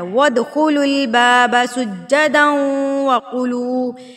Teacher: ود واو کو دال کے اوپر مارنا ہے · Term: حروف قلقلہ